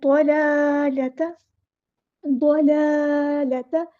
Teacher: ضاد کے ساتھ ملانا ہے، ود۔ حمزۃ الوصل ہمارا ڈراپ ہو جائے گا اور لام جو ہے ہمارا لام شمسیہ ہے تو ظاہر نہیں کریں گے۔ والضلالۃ، ضاد پورا ادا کرنا ہے، موٹا ادا کرنا ہے، لام پہ کھڑا زبر ایک الف کے برابر لمبا کرنا ہے، دوسرے لام کو لمبا نہیں کرنا، اس طرح پڑھنا ہے۔